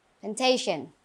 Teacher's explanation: Remember the stress is on the second syllable.